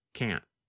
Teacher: The tongue comes to a stop against the hard part of the roof of your mouth just behind the upper front teeth. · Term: held T